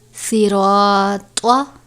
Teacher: صاد کو آپ نے سین کی طرح نہیں پڑھنا بلکہ صاد کو پور کر کے پڑھنا ہے. یہاں پر الف سے پہلے زبر ہے تو الف مدہ ہوگا.